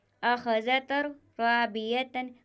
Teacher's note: یہاں پر تنوین کے بعد حروف ادغام میں سے را آیا ہوا ہے تو یہاں پر بھی گننا نہیں ہوگا، بغیر گننے کے ادغام ہوگا۔ رو الف زبر رو، بازیر بھی رو بھی، یا زبریہ رابیہ، تا دو زبر تن، رابیتن، اخذتر رابیتن۔